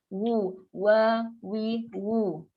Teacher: Waw lah muncul, makhraj waw dekat bibir. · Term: huruf waw